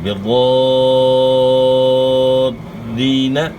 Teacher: ضاد کو آپ نے موٹا ادا کرنا ہے، دوسرا شد کو خوب جماؤں کے ساتھ ادا کرنا ہے. پہلے آپ نے کھینچنا ہے، کھینچنے کے بعد پھر شد کو صحیح خوب ادا کرنا ہے.